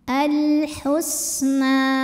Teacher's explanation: Nama sifatnya adalah sofir, berdesis seperti suara ular.